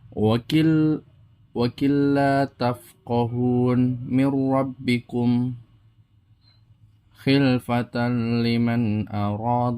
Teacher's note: idgham bilagunah ini memasukkan atau melebur tanpa dengung